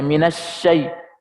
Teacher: Jadi huruf shin itu dia makhrajnya di tengah lidah.